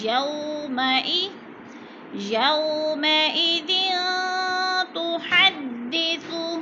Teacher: تا حروف اخفا میں سے ہے تو غنہ کریں گے، ناک میں آواز لے جائیں گے